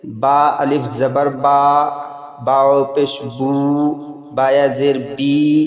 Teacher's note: الف مدہ، واو مدہ، یا مدہ منہ کے اندر کے خالی حصے سے ادا ہوتے ہیں